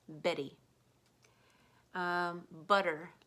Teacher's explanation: Flap the tongue and turn the two T's into a D sound